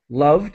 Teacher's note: a D sound as quick as possible. Loved, no extra syllable.